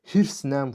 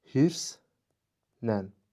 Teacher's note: Hirslə sözünün düzgün tələffüzü hirsnən formasındadır. Yəni, l samiti n ilə əvəz olunur.